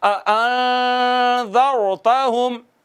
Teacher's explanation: نون پر اخفا کریں گے اور ایک الف کے برابر آواز کو چھپائیں گے